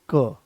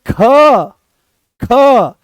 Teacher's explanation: कोई ज्यादा जोर नहीं लगाना पड़ा, आराम से वो आ गया है क, कम प्राणवायु की आवश्यकता पड़ी, आराम से आपने उसको बोल दिया। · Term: अल्प प्राण